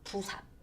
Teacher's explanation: 원래는 불을 뜨는 삽에서 불삽인데 리을이 탈락돼서 부삽 이렇게 되는 거예요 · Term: 리을 탈락